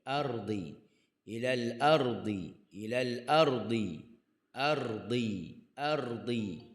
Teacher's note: Huruf ra. Muka lidah letak di gusi timbul tu. Mulut dalam keadaan relaks.